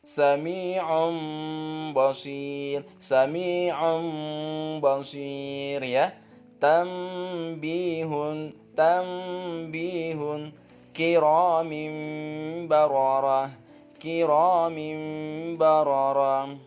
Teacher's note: Iqlab artinya menurut bahasa adalah membalik atau menukar. Tegasnya huruf nun atau tanwin itu membacanya ketika itu dibalik ditukar menjadi huruf mim